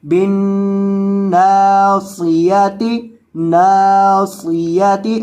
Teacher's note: اور یہاں یہ جو نون مشدد ہے اس کو بھی آپ نے گنہ کر کے پڑھنا ہے بن بن، اور اس کو نون کو لمبا کر کے پڑھنا ہے کیونکہ اس کے بعد الف مدہ ہے